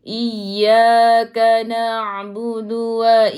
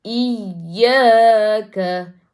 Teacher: Dal ada sabdu. Ya ada sabdu ataupun waw ada sabdu, kena tekan lebih sedikit. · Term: an-nabar